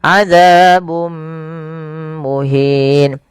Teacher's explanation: Yang ini kita namakan dengan bacaan idgham bi gunnah. Yaitu cara membacanya memasukkan tanwinnya kepada mim dan ditahan. Adzabun muhin, tidak dibaca adzabun muhin.